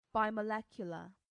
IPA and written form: ˌbaɪməˈlɛkjʊlə (bimolecular)